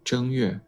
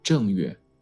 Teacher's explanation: The first character is pronounced with the first tone.